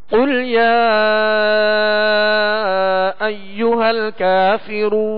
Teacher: قل شروع کا جو ہے وہ 2 نقطے والا قاف ہے، یہ پر حرف ہے، اس کو پر پڑھیں گے، کل نہیں پڑھیں گے بلکہ قل موٹا پڑھیں گے. اور یا پر جو مد ہے اس کو دراز کریں گے، کھینچیں گے